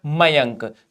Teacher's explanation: अनुस्वार केवल नाक से बोला जाता है